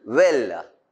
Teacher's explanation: the lips are closely rounded the vocal chords vibrate so that the voice is produced let's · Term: labio velar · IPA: /wel/